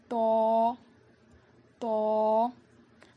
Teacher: زبان کی نوک کو سامنے کے دونوں دانتوں کی جڑ میں لگانے سے تو ادا ہوتا ہے. اس کو ہم 1 الف کے برابر کھینچ کر پڑھیں گے.